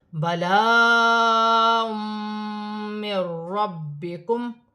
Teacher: را بھی مشدد ہے، با بھی مشدد ہے، جماؤں کے ساتھ ادا کیا جائے گا